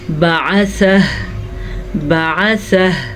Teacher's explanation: اگر وقف کریں ہم تو ہا کی آواز بھی آنی چاہیے